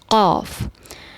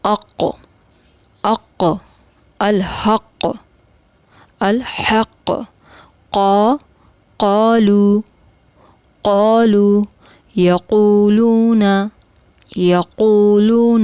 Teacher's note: حلق کی طرف سے زبان کا آخری حصہ اور اس کے اوپر نرم تالو کے آخر میں موجود جو چھوٹی زبان ہے اس سے ٹکرا کر جو ہے قاف ادا ہوتا ہے